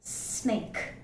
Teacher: the tip of the tongue is brought very close to the alveolar ridge or the teeth ridge, and the air is escaping by causing a hissing sound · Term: alveolar fricative